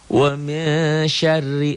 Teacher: rnya dibaca tipis karena barisnya di bawah